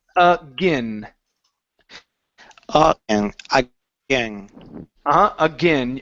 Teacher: the vowel sound at the end is pronounced like a short I